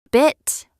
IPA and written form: bɪt (bit)